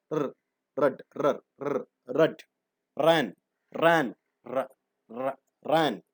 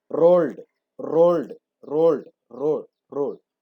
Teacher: the active articulator strikes against the passive articulator several times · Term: rolled consonants